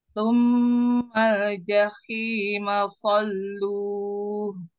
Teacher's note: Summal mal jahima salluh. Lam-lamnya ini tipiskan lam sukunnya.